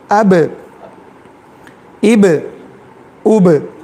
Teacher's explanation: اچھال رہے ہیں. آواز اچھل رہی ہے. دیکھیے اب اب اب ٹھیک ایک ہی مرتبہ اچھالنا, بار بار نہیں, باؤنس یعنی اس کا جو ہے خیال کریں. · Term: قلقلہ